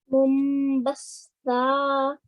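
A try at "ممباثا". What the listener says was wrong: Batha. Th sound. Mumbatha. So just remember to touch your tongue to the top of the tip of your top teeth. Remember to do that.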